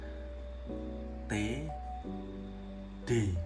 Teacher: Yang ketiga adalah lamino alveolar, yaitu konsonan yang terjadi pada daun lidah dan gusi. Nah, dalam hal ini daun lidah menempel pada gusi. Yang termasuk konsonan lamino alveolar adalah bunyi T dan D.